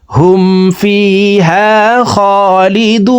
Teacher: এখানে 3 আলিফ টেনে নুনকে সাকিন করে ফেলবো, কারণ পেশের বাম পাশে জাজমুল ওয়া মদের হরফ। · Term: মধ্যে আরজি